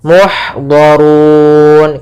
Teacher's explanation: ha ada memiliki sifat hamas yaitu mengalirnya nafas